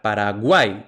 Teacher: uai se pronuncian en la misma sílaba por tanto es un triptongo